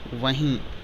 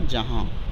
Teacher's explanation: نون غنہ کی آواز ناک سے آتی ہے، جب ناک سے بولیں گے تبھی نون غنہ کی آواز صحیح ہوگی